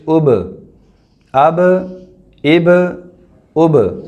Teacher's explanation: یہ با حروف قلقلہ میں سے ہے تو اس پر ہم جنبش کریں گے. حمزہ با زبر اب، حمزہ با زیر اب، حمزہ با پیش اب، اب، اب، اب.